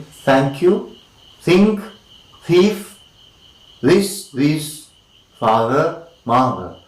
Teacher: Alright, once again, the tip of the tongue is the active articulator. The tip of the tongue is against the upper teeth, and we have dental sounds.